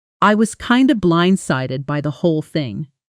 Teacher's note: kind of almost always collapses into kinda and by the often blends together smoothly